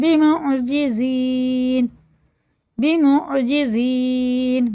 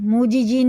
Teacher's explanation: یہ جیم اور زا کا الگ مخرج ہے، یہ زا سخت ہوتا ہے